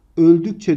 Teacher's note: C eki sertleşerek Ç'ye dönüşmüş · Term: benzeşme